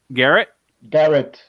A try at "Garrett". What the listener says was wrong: Well, it sounded like you're saying Eric.